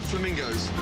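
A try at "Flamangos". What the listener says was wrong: FLA/mangoes, not flamingos, not flamencos.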